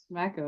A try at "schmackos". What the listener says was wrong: No, not smack. No, SCH, schmackos. Makes dogs schmack their lips.